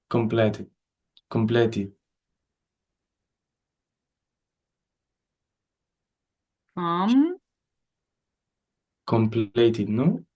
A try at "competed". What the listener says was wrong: I don't see L here. Competed. You remember competition? Competed. Competitive sports.